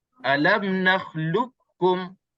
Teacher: Jadi seolah-olah qaf tak ada. Terus kita masuk qaf ke dalam kaf habis.